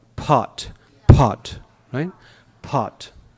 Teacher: Even though it's spelled P-O-T, what we're actually saying is P-H-O-T. Pot. But the T has no H.